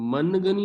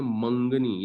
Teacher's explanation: میں ہم منگنی نہیں پڑھتے، ہم اس کو پڑھتے ہیں منگنی، یہ جو نون ہے یہ اصل میں نون غنہ بن جاتا ہے ، تو جب یہ نون غنہ بن جاتا ہے تو اس